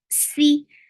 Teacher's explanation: Give safir in it. For kasra, give e sound, and the sound is very short.